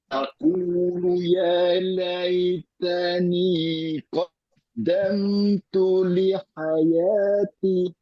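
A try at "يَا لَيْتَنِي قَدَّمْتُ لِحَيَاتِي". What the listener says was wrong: Nah, ti itu jangan pendek ya. Hayati. panjang sayun. Ti sama kayak ya. Lihayati. Dua.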